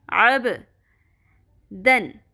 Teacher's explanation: با ساکن پہ قلقلہ ہوگا، عین کا مخرج اچھے سے ادا کرنا ہے باریک آواز میں وسط حلق سے